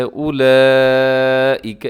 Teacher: اس کے اوپر مد ہے اور اس کو بڑی مد کہتے ہیں، مد متصل بھی کہتے ہیں۔ اس کو آپ نے 4 سیکنڈ تک لمبا کرنا ہے۔